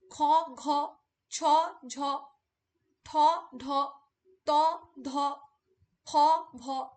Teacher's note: প্রত্যেকটা উচ্চারণের সময় দেখো আমাদের শ্বাসবায়ু কিন্তু বেশি করে নির্গত হচ্ছে